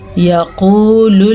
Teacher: قاف کو موٹا پڑھنا ہے کیونکہ قاف حروف مستعلیہ میں سے ہے